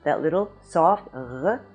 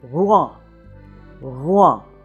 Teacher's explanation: to learn how to sound it but just for a hint: the French r or is not harsh and guttural it is actually the softest of the French consonants